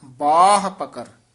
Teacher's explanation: ਬਬ ਦੇ ਕੰਨੇ ਨੂੰ ਵਧਾ ਦਈਏ ਹਹ ਤੇ ਆਵਾਜ਼ ਛੱਡ ਦੇਣੀ ਹੈ